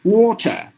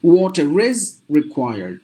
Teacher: silent so you have to pronounce the word as water but if you put the same word in a sentence the r is pronounced because the r is followed by a vowel · when you say this word individually the letter R is silent